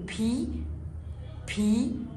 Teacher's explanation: voiceless letter يعني حرف غير منطوق، يعني ما بقولهوش من احبالي الصوتية. يعني لما بحط ايدي على احبالي الصوتية وبقول بي بي ما بتتهزش، ما بتعملش vibration